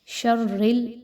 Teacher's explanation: را کے نیچے زیر آ گئی تو اس را کو باریک پڑھنا ہے